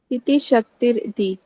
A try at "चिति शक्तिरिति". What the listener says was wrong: इति भी नहीं बोलो, फिर इकट्ठा बोलना पड़ेगा। चिति शक्तिरिति। चिति शक्तिरिति। पुरुषार्थ शून्यानाम गुणानाम प्रतिप्रसवः कैवल्यम स्वरूप प्रतिष्ठा वा चिति शक्तिरिति।